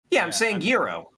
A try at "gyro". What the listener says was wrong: No, I think it's gyro, like a Y, like a year, like a silent G.